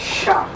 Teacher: S with a dot is a guttural sound.